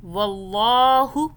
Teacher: اللہ کو موٹا پڑا، اس سے پہلے واو پہ زبر آ رہا ہے. زبر آئے پہلے یا پیش آئے تو اللہ کو موٹا پڑھتے ہیں.